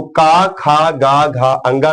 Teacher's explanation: का, खा, गा, घा, अंगा का उच्चारण स्थान कंठ है